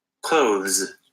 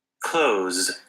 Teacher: most Americans don't bother doing that th sound in this particular word. They just say it like this. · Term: z sound